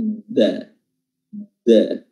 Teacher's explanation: In di sini kasratain bertemu dengan huruf dal, ya, hukumnya adalah ikhfa haqiqi, di mana posisi makhraj kita telah diletakkan pada makhraj huruf dal. Inda dan makhraj huruf dal adalah ujung lidah bertemu dengan gigi dari atas bagian belakang, bukan bertemu dengan langit-langit depan atau gusi